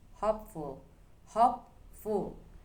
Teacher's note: The stress stays on hope.